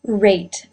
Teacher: the lips were in a tight Circle